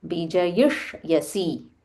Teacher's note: There is a half murdanya sha. So stress on that.